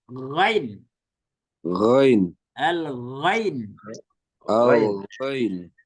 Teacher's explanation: akar lidah ketemu dengan langit-langit yang lembut itu di belakang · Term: adanal halqi